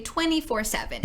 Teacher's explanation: We often pronounce this 24, the t gets dropped.